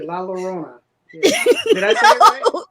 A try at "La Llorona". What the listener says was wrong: No, the two L's. You could pronounce it like a Y. Yo, Rona. But if you're Puerto Rican, a lot of Puerto Ricans will say Jorona. They pronounce the double L's like a J.